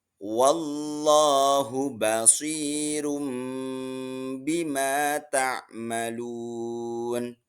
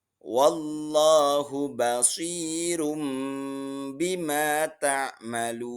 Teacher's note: maka suaranya tanwin itu anak-anak berubah menjadi m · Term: iqlab